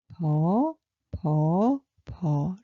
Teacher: low pitched and soft